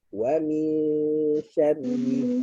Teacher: Makhraj shin tengah-tengah lidah berjumpa dengan langit-langit atas. Mulut gigi dengan gigi kita dirapatkan. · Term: dengung